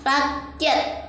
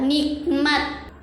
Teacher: Nah selanjutnya ada simbol tanda tanya ini digambarkan sebagai huruf k penyebutan hamsah pada kata rakyat yang tidak disebutkan pada huruf k